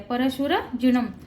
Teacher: न वर जो अनुस्वार आहे त्याचा उच्चार म करायचा आहे